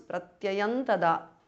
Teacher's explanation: Pratyayam ends in Anuswara followed by Ta. So it becomes Pratyayan Tada.